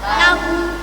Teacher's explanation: setiap hi dan hu dibaca panjang, panjangnya satu alif atau dua harakat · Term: Mad silah qasirah